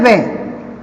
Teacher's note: वकारस्य दंतोष्ठम यहां पे दे रखा है वे, तो वे जो होता है इसका उच्चारण स्थान होता है दंतोष्ठ। दंत और ओष्ठ इन दोनों ही, दोनों को मिलाने से ही वे का उच्चारण होता है दंतोष्ठ। तो इसमें बता रहा है वकारस्य दंतोष्ठम, इसका विच्छेद करें तो दंत धन ओष्ठ होता है, यानी दंत का मतलब होता है दांत और ओष्ठ का मतलब होता है होठ।